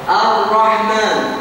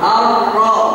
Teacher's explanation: Ujung lidahnya saja yang bertemu langit-langit itu yang bergetar. Jadi tidak semua bergetar. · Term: huruf ro